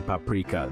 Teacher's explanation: The emphasis is on the second syllable, paprika.